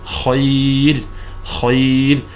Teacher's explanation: ولكننا وقفنا عليها أصبحت ساكنة وقبلها ياء ساكنة، فهنا ترقق.